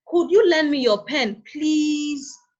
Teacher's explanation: Usually, our focus word is at the end of the sentence, which after the end of the sentence, the tone or the pitch of your voice goes up. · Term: rising tone